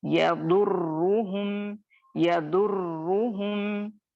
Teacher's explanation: रॉ पे शद्दा है तो 2 दफा रॉ अदा होगा। एक रॉ दौस यानी दौत से रॉ साकिन मिलेगा, फिर रॉ पेश रू, दोनों को अदा करना है, शद्दा को सही तरीके से अदा करेंगे। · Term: रॉ मुशद्दद